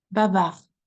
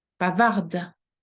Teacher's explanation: The last sound we should hear is the R, which is lost in the throat.